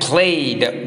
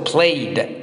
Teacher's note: we don't uh pronounce this e d like a separate syllable